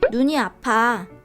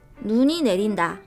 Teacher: 발음해보면 첫 번째 눈을 짧게, 두 번째 눈을 길게 발음하는 것을 알 수 있다. 첫 번째 문장의 눈은 빛의 자극을 받아 물체를 볼 수 있는 감각기관을 뜻하는 말로 짧게 발음하고 두 번째 문장의 눈은 대기 중의 수증기가 찬 기운을 만나 얼어서 땅 위로 떨어지는 얼음의 결정체를 뜻하는 말로 길게 발음한다.